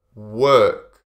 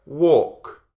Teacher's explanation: So this is a slightly different sound to work. With work, you have the er sound. Er. Work. With walk, you have or.